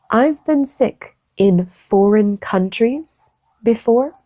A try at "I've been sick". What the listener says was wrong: Non, j'entends pas been.